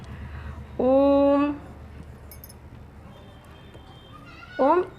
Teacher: इसको ह्रस्व स्वर की अपेक्षा और दीर्घ स्वर की अपेक्षा इसमें इन दोनों से ज़्यादा यानी 3 गुना समय करीब लगता है, इसीलिए इसको प्लुत स्वर बोलते हैं।